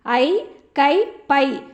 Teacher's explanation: ஐகார எழுத்து தனித்து வரும் இடங்களில் தனக்குரிய 2 மாத்திரை அளவில் முழுமையாக ஒலிக்கிறது